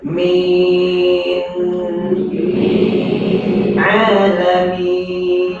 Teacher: Jadi nak taruh nun tu lidah sentuh juga pangkal gigi hadapan. Langit-langit keras yang hampir dengan gigi hadapan juga.